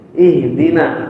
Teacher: Huruf H itu huruf yang lemah, sehingga perlu dibantu dengan hembusan nafas